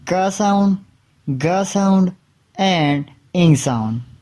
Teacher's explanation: Velar sound produced by raising the back of the tongue to the soft palate or velum.